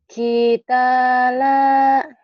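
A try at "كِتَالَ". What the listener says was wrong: kita panjang semua. Ulang.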